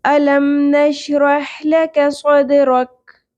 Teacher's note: حمزہ کے اوپر زبر ہے، جھٹکا کی آواز کلیئر ہونی چاہیے